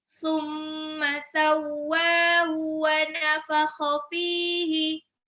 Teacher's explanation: wa nafakha fihi, kha-nya ngarok